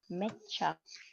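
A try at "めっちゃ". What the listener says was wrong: It's double cha.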